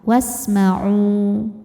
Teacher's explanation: ada wau mati didahului harakat dhamah maka huruf ainnya panjang dua harakat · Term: Mad Thobi'i